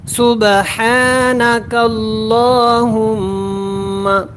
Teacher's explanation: ہم غنہ کر کے پڑھیں گے · یہ اللہ والا لام ہے، اس کو ہم نے موٹا پڑھنا ہوتا ہے